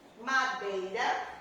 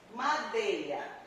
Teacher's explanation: O E tem um som forte, ele é uma vogal. E o I é uma semivogal.